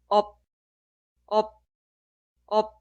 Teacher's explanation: Suena muy parecido a pen, apto. Al final de pronunciar, detener el flujo de aire. Por eso es casi inaudible. Esta sílaba suena op, op, op. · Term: consonante final